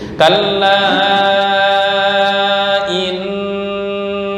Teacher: Nun dan mim yang bertasdid disebut bacaan gunnah. Temponya ditahan. Mohon jangan buru-buru.